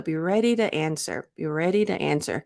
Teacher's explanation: with that reduction the T became a flap T so it was not overly aspirated